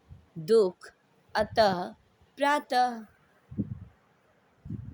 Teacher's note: विसर्ग का उच्चारण अ की आधी ध्वनि, ध्वनि मतलब आवाज़ के समान होता है